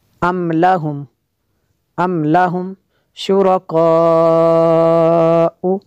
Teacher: یہ جو مد ہے یہ مد متصل ہے کیونکہ حمزہ اس کلمے میں ہے